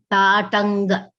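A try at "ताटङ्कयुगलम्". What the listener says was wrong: Again, slight ga I am hearing. Tatanka. Tatanka. Yeah, I think you have a slight tendency to pronounce ta as da and ka as ga. So please pay attention to that.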